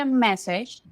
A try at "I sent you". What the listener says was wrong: But if we're talking about the past, I want to hear the T, which means I don't want to hear a D sound. I'm hearing I send you, right? Listen, send you. Sent you. There is a little shortcut that we can take when there is a T and a ya. Do you know what happens when there is a T and then a ya right after?